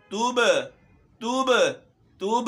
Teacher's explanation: تا پہ پیش ہے اور با میں قلقلہ ہے